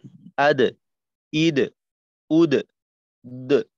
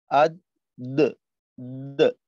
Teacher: এই যে যখন মাখরাজ থেকে প্রথম তো হইল আদ, এইখানে আমরা যে কাজটা করি যে জিহ্বার আগাকে সামনের উপরের দুই দাঁতের আগার সঙ্গে রাখলাম, যেটা কিনা দালের মাখরাজ। এইখান থেকে যখন আমরা পৃথক হই, ওই সময়টায় আমাদের এই ফিরতি আওয়াজটা হয় আদ, দ, দ।